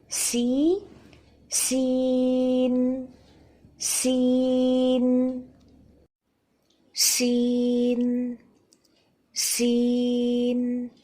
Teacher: تو سین کہتے ہوئے دانت اس طرح مل جاتے ہیں کہ سیٹھی کی کیفیت پیدا ہو جاتی ہے. یہاں پہ ہم حرف کا نام ادا کر رہے ہیں، یعنی کہ سین. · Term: سیٹھی والی کیفیت